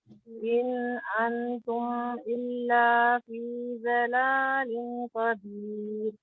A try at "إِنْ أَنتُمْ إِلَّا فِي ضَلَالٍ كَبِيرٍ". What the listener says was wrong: اچھا انتم میں بھی ان پہ غنہ کرنا ہے یعنی کہ لمبا تھوڑا لمبا انتم